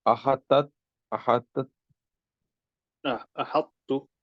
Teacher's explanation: It is an incomplete idgham because a stronger letter doesn't enter completely into a weak one. So the Arabs used to merge the non-vowels Ta into Ta while preserving the characteristics of adhesion